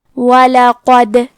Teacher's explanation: کلمت وَلَقَدْ میں حرف الدال پہ جزم ہے، یہاں دال کا حکم ہے قلقلہ۔ قلقلہ کا معنی ہے حرف ساکن کو ہلانا، تو ہم حرف الدال کو ہلاتے ہوئے یہ کلمہ کو پڑھیں گے۔